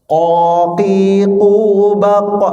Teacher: kita latih qafnya ya, dan dia lebih tebal daripada kaf ya